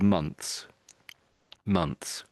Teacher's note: almost all Brits, sort of try to say the TH, and it's sort of months, months.